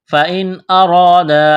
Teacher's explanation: نون ساکن کے بعد حروف حلقی میں سے حمزہ ہے تو نون ساکن پر غنہ نہیں کریں گے، آواز ناک میں نہیں چھپائیں گے